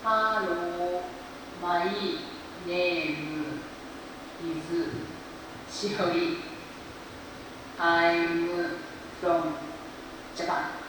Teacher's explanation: It's a little bit difficult to understand what she's saying. The accent is not so good. It's very slow and very flat. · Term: Japanese style pronunciation